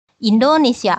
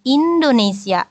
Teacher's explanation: Nah, dalam bahasa Jepang itu tidak betul ya, harusnya n-nya juga dibunyikan Indonesia, seperti itu jadinya kalau dalam bahasa Jepang, Indonesia. Jadi n-nya sendiri dihitung sebagai satu mora, jadi tidak dilabrak seperti itu aja ya, dibunyikan.